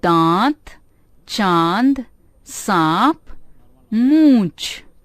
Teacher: इसका उच्चारण नाक और मुंह से किया जाता है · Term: अनुनासिक